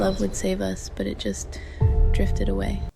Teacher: It's got that vocal fry that some of you have made fun of me for having.